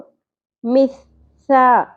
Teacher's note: سا کو باریکی سے ادا کریں گے اور سا کے اندر شدت نہیں ہوتی، نرمی ہوتی ہے